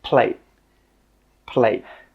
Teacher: With that final T sound, we stop the air from coming out. We don't say 'plaTe'.